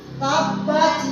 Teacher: Qalqalah yang pantulannya sangat besar besar yang terletak di akhir kalimat